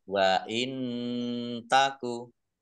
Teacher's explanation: Nun sukun bertemu dengan huruf ta, bacaan ikhfa, dibaca samar-samar.